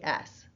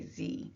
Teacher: Like put your hand on your neck now and say S. You don't really feel much vibration, do you? But you do if you say Z. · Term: voicing